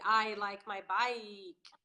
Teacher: I'm stretching out the ah part instead of the ye.